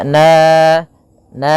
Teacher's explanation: fathah bertemu Alif sepanjang dua harakat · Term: madii